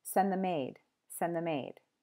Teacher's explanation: send them aid, can sound like send the maid, because the M moves over